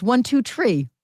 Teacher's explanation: It's Troop. They don't pronounce their H's in Northeast PA.